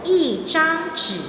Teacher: When E is followed by a syllable or word that's pronounced the first, second, third tone, E changes its tone to the falling tone, the fourth tone.